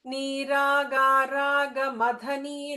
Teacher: And Raga Mathani, that tha is a Mahaprana.